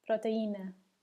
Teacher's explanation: Don't forget to put the stress on the I here.